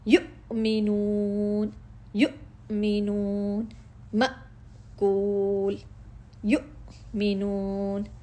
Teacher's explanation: حمزہ ساکن، اپنے مخرج میں اس کی آواز بند ہو گئی، جھٹکا پڑ گیا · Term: صفت شدیدہ